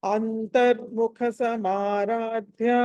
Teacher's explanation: సో దీంట్లో అంతర్ముఖ ఖ మళ్ళీ మహాప్రాణము, తర్వాత సమారాధ్యాలు ధ మహాప్రాణము.